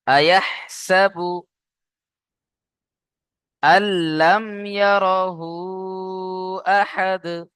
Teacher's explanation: আল্লাম, হামজা গিয়ে লামের সাথে যুক্ত হয়ে যাবে, কারণ কি নুন সাকিনের পরে লাম রয়েছে, নুন সাকিনের আওয়াজটা পরিপূর্ণভাবে লামের সাথে মিলে গিয়ে বিনা গুন্নায় জাহির করে পড়তে হবে। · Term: ঈদগামে তাম